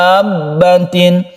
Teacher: Mutawal itu artinya dipanjangkan. Kita panjangkan dulu dalnya ini sampai 3 alif, baru kita tasydidkan. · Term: mad lazim mutawal